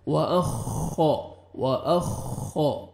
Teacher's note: و اخا, خا کو موٹا کر کے پڑھیں گے اور شد ہے, اچھی طرح آپ نے سختی سے حمزہ کو خا کے ساتھ ملانا ہے. و اخا, و اخا, اور را کو مرزبر ہے, را کو موٹا کرنا ہے, تا کا لائٹ سے ساؤنڈ آئے گا.